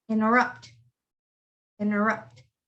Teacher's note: the t is not pronounced it's just interrupt